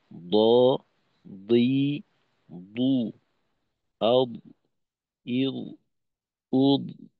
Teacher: মূলত দদের ক্ষেত্রে কিন্তু আমাদের জিহ্বার আগার প্রয়োজন না, আমাদের প্রয়োজন হলো জিহ্বার পাশ, ডান পাশ বাম পাশ, একেবারে জিহ্বার গোড়া থেকে নিয়ে একেবারে জিহ্বার আগার আগ পর্যন্ত, বা বলতে পারি যে জিহ্বার মধ্যখানের সীমানাটা কিছুটা পার করবে, বাকি আগার দিকে যাবে না। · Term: দদের উচ্চারণ